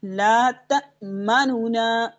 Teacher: اظہار مع الروم کا کیا مطلب ہے؟ کہ ہم 1/3 حرکت پڑھتے ہیں